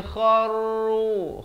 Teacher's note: kha di hujung kerongkong. Kharru sujjadau, masuk berserta dengan dua harakat.